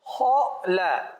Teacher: پہلے موٹا پڑھیں گے خا, پھر پڑھیں گے لا